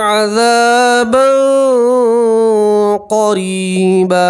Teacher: تنوین کا آواز کو ناک میں چھپائیں گے اور ایک الف کے برابر گننا بھی کریں گے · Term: تنوین کا اکفا